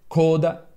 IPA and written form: ˈkoda (coda)